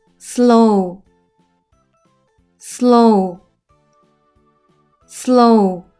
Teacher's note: OW는 이중 모음이에요. 뒤에 오는 W는 소리가 나지 않고 앞에 오는 O는 장모음 소리가 나서 오우 소리가 나요. 앞에 오는 르 소리는 스와 합쳐져서 스, 오 소리는 르 소리와 같이 소리 나서 로, 우는 혼자 소리 나서 우, 슬로우.